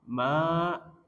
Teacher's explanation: ma berharokat fathah ketemu alif mad tabi'i. Panjangnya dua harokat.